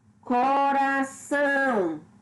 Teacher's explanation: São, que é a sílaba tônica, é a última, é a mais forte.